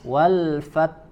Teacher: huruf a ada huruf ta ya ada huruf ta ya ingat-ingat membaca huruf ta sempurnakan dulu syidahnya Tahan di makhrajnya kemudian lepaskan sedikit sehingga mengeluarkan angin